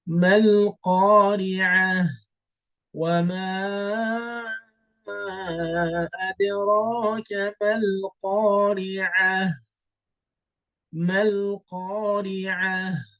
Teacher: So you see the ta al-marbuta, I'm converting this to a ha.